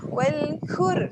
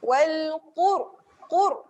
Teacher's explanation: dia adalah huruf tebal, dia kena tekan di belakang di pangkal lidah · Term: qaf